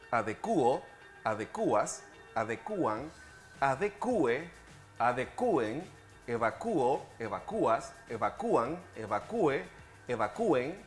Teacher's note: se ha extendido entre los hablantes el uso de formas con hiato según el modelo de actuar